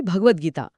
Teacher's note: त ने स्वतःला द मध्ये कसे मऊ करून घेतले आहे